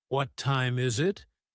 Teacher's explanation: Notice how your voice rises at the end of the question. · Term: intonations